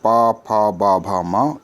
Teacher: पा वर्ग में आ जाएंगे पा फा बा भा मा, इसका उच्चारण स्थल है ओष्ठ